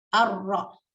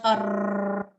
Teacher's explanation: you should not do it more than one vibration. Just one vibration. Arra, not arr.